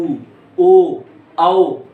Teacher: वृत्त की आकृति बना रहे हैं। यानी ऐसे स्वर जिनका उच्चारण करते समय हमारे जो ओष्ठ की आकृति बन रही है वृत्ताकार बन रही है